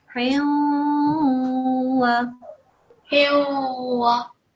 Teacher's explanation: We will partially make a noon sound, okay? Not fully, but we will make a nasal sound, and that will be the partial noon sound. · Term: partial assimilation